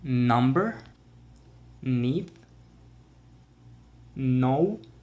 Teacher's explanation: second nasal sound that we have is the sound also called the alveolar nasal sound which means that you put your tongue just behind your top teeth here and the air comes out your nose